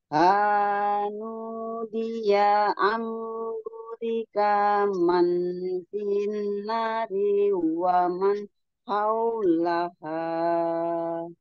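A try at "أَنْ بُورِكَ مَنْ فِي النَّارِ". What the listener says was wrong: Masih kelewat bunyi Om ya. Jangan bu jangan burika tapi burika man bunya dua harokat.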